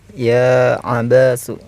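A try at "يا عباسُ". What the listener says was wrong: Ya, bukan abasu tapi abbasu. Jadi huruf ba-nya itu ada apa? Iya, ada tasydidnya.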